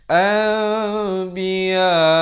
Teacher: Manakala di sini mim iqlab, dibacakan dengan mim itu, bibirnya itu hampir bersentuhan kadar panjang dua harakat